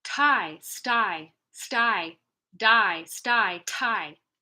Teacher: Okay, let's put an S in front of the T. It's going to steal the aspiration.